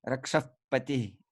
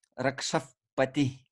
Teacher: Visarga turns into F when it faces pa or pa, okay?